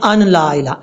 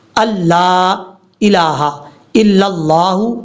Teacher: حمزہ کو لام سے ملانا ہے، بیچ میں نون کو چھوڑ دیں گے